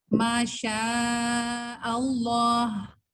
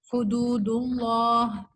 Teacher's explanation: زبر. تو ہم اس اللہ کے لام کو موٹا پڑھیں گے، یعنی مفخم پڑھیں گے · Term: لام لفظ الجلالہ